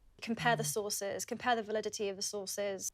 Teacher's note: uses the /ɛː/ vowel in the word 'compare'